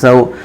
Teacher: سوءن، واو ساکن سے پہلے سین پر زبر ہے، واولین ہوا، اس لیے واولین کو نرم آواز کے ساتھ جلد پڑھیں گے، معروف پڑھیں گے، مجہول آواز سے بچیں گے